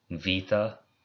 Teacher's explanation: beta is vita, the B becomes a V sound.